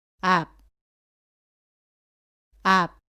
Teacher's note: 이때의 받침소리 비읍은 첫 소리에서 오는 바와는 다르게 두 입술을 붙인 채로 발음을 끝냅니다